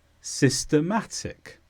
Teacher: So systematic is an adjective and the stress is on ma,